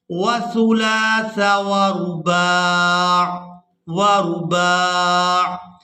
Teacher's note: وقف کی صورت میں عین جو ہے یہ ساکن ہو جائے گا